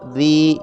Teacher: یہ یا مدہ ہے، اس لیے اس کو ایک الف کے برابر کھینچ کر پڑھیں گے